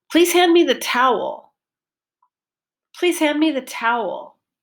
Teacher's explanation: Pitch went up and down, and the towel, the vowel sound was long and clear.